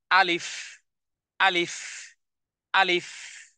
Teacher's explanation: এখানে দুই ঠোঁট একত্রিত হয়নি এবং মুখের সর্বশেষ বাতাসকে আমি দুই ঠোঁটের মধ্যখান থেকে বের করে দিচ্ছি